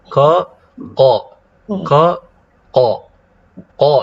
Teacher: Huruf qaf ini keluarnya aqsal lisan. Ya, aqsal lisan, lisan bagian belakang, ma'al hanakil lahmi, ya, bersama dengan al-hanak, ya, langit-langit di sini yang lahmi, yang daging, yang lembut.